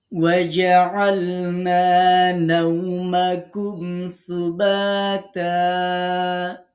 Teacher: আমরা দুই জবরটার মধ্যে একটা জবর বাদ দিলাম। এক আলিফ পড়লাম। আলিফ থাকলেও পড়ব না থাকলেও এক আলিফ মাদ করব। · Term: অকবিল ইদাল